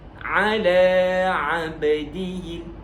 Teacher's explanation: Iaitu qalqalah, lantunan bagi huruf ba.